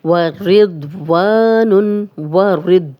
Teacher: वाव पे होंठ गोल करने हैं और रॉ की ज़ेर दौद से मिलेगी, और ये मोटा भी है, दौद मोटा हर्फ है और वा अलिफ मद है, खाली अलिफ और पीछे वाव पे ज़बर है।